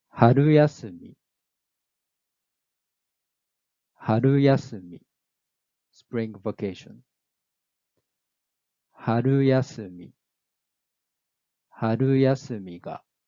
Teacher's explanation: the pitch drops from the mora after the letter ya. So this type is middle high.